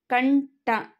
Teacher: ಕಂಠ ಇದನ್ನ ಉಚ್ಚಾರ ಮಾಡಬೇಕಾದರೆ ಬಳಸುವಂತಹ ಅನುನಾಸಿಕ ಯಾವುದು ಅಂತ ನಾವು ಮೊದಲು ಕಂಡುಹಿಡಿದುಕೊಳ್ಳಬೇಕು ಈಗ ನಾವು ಕಂಠ ಅಂತ ಉಚ್ಚಾರ ಮಾಡಬೇಕಾದರೆ ನಾವು ಬಳಸುವಂತಹ ಅನುನಾಸಿಕ ಣ